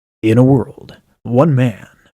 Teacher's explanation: Very far apart vocal folds or false folds. We're getting that classical sound. I know we don't necessarily want it, a lot of us, but that's what they're like when they're really far apart.